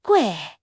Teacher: Fourth tone. Sharp and falling like a gasp.